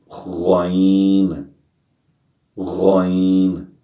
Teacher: یہ خراٹہ دار موٹی آواز سے پڑھیں گے، یہ حروف مستعلیہ میں سے ہے، خو کی طرح، غین، غین۔